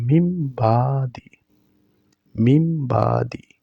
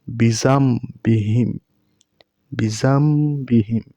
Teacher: যেহেতু নুন সাকিনের পরে বা তাই নুনের উচ্চারণ হবে না নুন টাকে মিম হিসেবে পড়বো বিজাম বিহিম বিজাম বিহিম এবং এক আলিফ পরিমাণ গুন্না করবো এবার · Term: ইকলাব